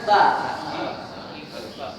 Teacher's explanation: Ujung lidah ketemu gigi atas, ujung gigi atas ya. Yalhas. Keluar nafas.